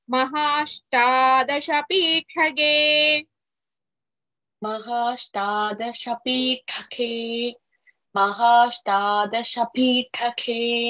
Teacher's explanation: ಪೀಠಗೆ ಠಾ ಇಸ್ ಮಹಾಪ್ರಾಣ